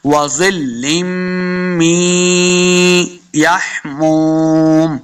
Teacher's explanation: اب آپ دیکھ رہے ہیں کہ میں نے می پڑھا ہے، من نہیں پڑھا